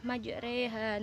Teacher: Namanya bacaan imalah. Imalah artinya memiringkan harokat fathah pada harokat kasroh